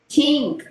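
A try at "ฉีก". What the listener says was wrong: no long sound ชีก ชีก ชีก mean rib RIP rib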